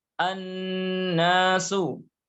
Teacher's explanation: Karena alif lam bertemu dengan nun, maka al-nya, suara lam sukunnya hilang, masuk ke huruf nun bertasydid menjadi an-nasu. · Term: syamsiyah